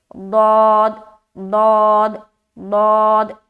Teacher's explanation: दौत का मखरज जो है ना, ज़बान की करवट है, करवट लेते हुए अदा करते हैं। ज़बान का जो बगली किनारा है, अब वो दाहिनी साइड भी है, बाईं साइड भी है।